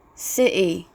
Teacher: Fifth, intervocalic T is glottalized, especially in younger speakers.